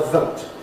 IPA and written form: vəʊt (vote)